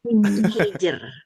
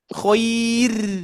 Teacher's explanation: posisi huruf jim yang di tengah lidah itu, Bapak Ibu sekalian, mempengaruhi huruf ro. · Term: tebal